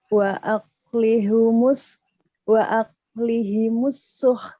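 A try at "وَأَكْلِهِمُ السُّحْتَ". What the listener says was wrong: Masih belum nampak hemesnya. Suh.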